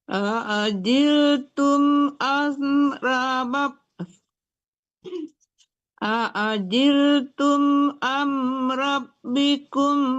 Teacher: Tum tidak dengung, am tidak dengung ya, jangan tertahan.